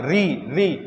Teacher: दांत के पीछे वाला स्थान इसे क्या कहते हैं मूर्धा कहते हैं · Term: मूर्धन्य